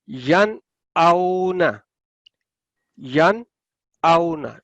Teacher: यन आउना, यन आउना, यन लंबा नहीं करना क्योंकि आगे आगे आपके आगे है ये, ए, हमजा। तो आपने नून साकिन के बाद हमजा है तो इसलिए आप इसको वाजे क्लियर आवाज के साथ पढ़ेंगे।